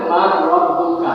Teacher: এখানে ইদগাম হয়েছে, নুন সাকিনকে র এর সাথে ইদগাম করে সন্ধি করে করা হয়েছে কিন্তু গুণনা করা হয়নি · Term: গুণনা ছাড়া ইদগাম